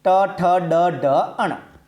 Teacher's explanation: જે વર્ણોનું ઉચ્ચારણ કરતી વખતે જીભ મોઢાના તાળવાનો સ્પર્શ કરે તો એ મૂર્ધન્ય વર્ણો છે